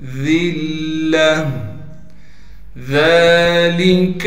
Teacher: وجہ سے ذال کو ایک الف کے مقدار کھینچیں گے اور ذال کو باریک کر کے پڑھیں گے یعنی نرم پڑھیں گے ، کاف کو پھر ہم لام ساکن سے ملا دیں گے،